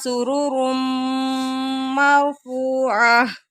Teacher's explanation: تنوین کے بعد میم آ گیا، ادغام ہو رہا ہے۔